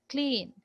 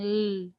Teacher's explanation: there is a small subscript under small subscript Circle diacritic because the normal voice quality of L is suppressed suppressed by the aspiration of K before it